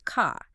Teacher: and you are trying to learn the non-rodic R where you drop the R sound entirely and car becomes CA